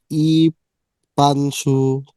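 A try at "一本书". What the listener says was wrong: পান কেন? একটু আগে বলেছেন পেন। পেন, ই পেন, ই পেন শু, পেন শু।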